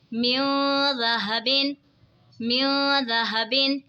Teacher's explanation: یہاں پہ دیکھیں جی نون ساکن ہے، نون ساکن کے بعد حروف اخفا کا دال آ رہا ہے تو اخفا ہوگا یعنی غنہ کر کے پڑھیں گے